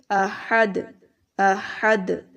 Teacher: जब दाल के ऊपर जज़म आ जाती है तब हम क्या करते हैं, उसके ऊपर कलकला करते हैं, हिला कर पढ़ते हैं उस लफ्ज़ को। ठीक है, ताकि उसकी साउंड वापस आए।